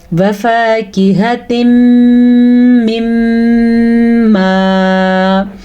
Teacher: یہاں پہ میم کی وجہ سے غنّہ ہو رہا ہے